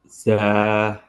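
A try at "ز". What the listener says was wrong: So try not to have a not but z, not sa but za.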